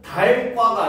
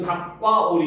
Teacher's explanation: 리을 기역 받침이 기역으로 소리 나는 거예요